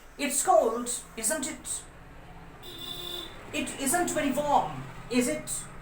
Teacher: The intonation falls on the tag because the statement is clearly true.